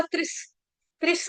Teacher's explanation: विसर्ग का उच्चारण होगा त्रिस, त्रिस आधा स हलंत स